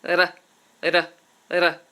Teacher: the mouth because in many other languages what you do is touch the roof of the mouth and you um you tap this sound it's called a tapped R